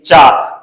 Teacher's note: जब आप चा बोलेंगे तो आपकी जो जीभ है आप तालू को स्पर्श करेगी